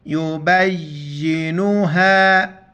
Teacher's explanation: با کو یا کے ساتھ ملیں گے اور سختی سے پڑھیں گے